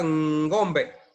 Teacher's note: es una N sonora que va delante de la palabra y se hace de manera bilabial y a la vez de la fosa nasal